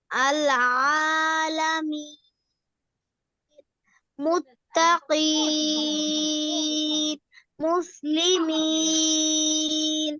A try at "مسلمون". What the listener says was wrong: না না, মিমে পেশ আছে